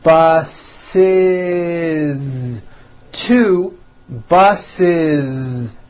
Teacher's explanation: bus for example bus ends with an s sound s bus so if you make it plural you're going to add the ending is with a voiced Z